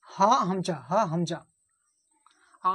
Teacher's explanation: এই হায়ের সাথে আর একটা অক্ষর আছে, সেটা হচ্ছে হামজা। হা আর হামজা এ দুটোর মাখরাজ হচ্ছে হালেক বা কণ্ঠনালীর শুরু হতে উচ্চারণ হয়